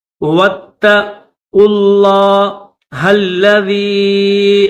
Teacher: قاف کو لفظ اللہ کے ساتھ ملائیں گے